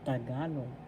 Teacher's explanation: The accent is in the second syllable, so you pronounce this because in Tagalog, Tagalog.